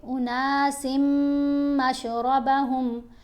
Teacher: سین کو میم سے ملاتے ہوئے غنہ کریں گے